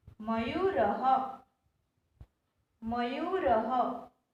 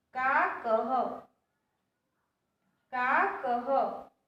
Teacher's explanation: This visarg is pronounced as ha because the last vowel is a.